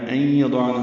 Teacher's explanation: این یضعن میں ادغام ناقص ہے، غنہ ہوگا